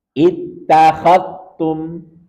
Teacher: Ini langsung masuk ke ta, seakan-akan dalnya hilang. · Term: idgham mutaqaribain